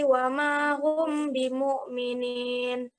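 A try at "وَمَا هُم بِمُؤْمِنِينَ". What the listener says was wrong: Kurang dengungnya. Wa ma hum bimu'minin. Diulangi. Yang pertama dibacaan hum bimu'minin. Apa itu hukum bacanya? Mim sukun bertemu dengan ba. Ya, sekarang ya, semua tahu nih, ikhfa Safawi.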